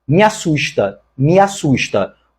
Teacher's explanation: o me é mais fraco em relação ao verbo assusta Então me é monossílabo átono e por isso não recebe o